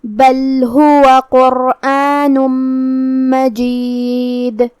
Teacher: آخر میں نون پہ تنوین پیش ہے، پھر حرف المیم آتا ہے کلمت مجید میں، یہاں بھی حکم ہے ادغام، تو ہم یہ تنوین کو میم میں داخل کر کے غنہ اور تشدید کے ساتھ یہ حکم کو ادا کریں گے، قرآن مجید۔ کلمت مجید کے آخری میں دال پہ ہم رکیں گے تو اس پہ جزم سے رکیں گے، تو یہاں بھی دال کا حکم ہوگا قلقلہ